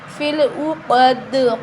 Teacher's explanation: قاف کو موٹا پڑھیں، دال پہ قلقلہ کریں گے، حروف قلقلہ ہے.